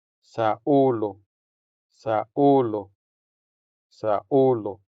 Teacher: Since this U sound is stressed, it sounds longer than the unstressed U.